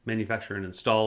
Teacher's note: manufacture and install is an exception because install is final stress